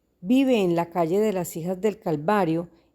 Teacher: Pueden ver en estos ejemplos que este signo de puntuación está acompañado de una flecha horizontal que nos indica que la curva entonativa no sube ni baja, por eso se escucha como una suspensión de la voz. Cuando nos encontramos con estos puntos suspensivos, entonces mantenemos una entonación fonética neutral.